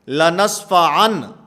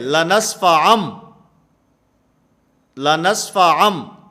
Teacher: میم کے ساتھ اس نون کو بدل دینا ہے، اس کو اقلاب کہا جاتا ہے